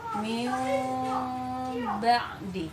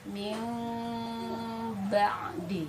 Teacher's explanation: cara pembacaannya adalah tadi bibir tidak rapat sempurna gitu dan ditahan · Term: iqlab